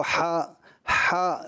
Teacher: حلق کے درمیان یعنی بیچ والے حصے سے ہا ادا ہوتا ہے